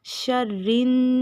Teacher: شر. پھر رن، را کو نون کے ساتھ ملائیں گے، نون پہ شد ہے تو غنہ بھی ہوگا